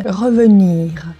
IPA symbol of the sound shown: ə